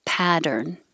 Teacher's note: Pattern. The T's changed to D.